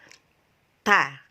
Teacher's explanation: Kalau kita ngetes, letakkan tangannya di bagian depan dari bibir kita, maka ada udara keluar ketika kita mengucapkan ta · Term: hames